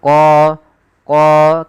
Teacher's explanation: Kemudian pada lafal qa, di sini ada mad tabi'i yaitu qa. Tebalkan huruf qa-nya qa karena dia huruf isti'la, yaitu pangkal lidah kita terangkat.